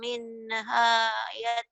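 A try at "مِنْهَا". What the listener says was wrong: Entar minenya dihulangin ya. Minha, jangan mine. Minha.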